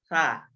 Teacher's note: সাটা হচ্ছে আপনার জিহ্বার আগা আর সামনের দাঁতের আগা।